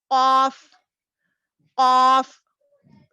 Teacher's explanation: قاف ایسا گول موٹی آواز نکلتی، گونجتی ذرا آواز